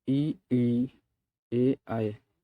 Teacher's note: अग्र स्वर वह स्वर जो जीभ के अगले भाग से बोले जाते हैं